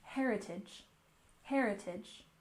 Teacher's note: And heritage, we stress the first syllable